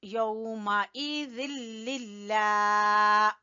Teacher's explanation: लफ्ज अल्लाह को यहाँ पर हम बारीक पढ़ेंगे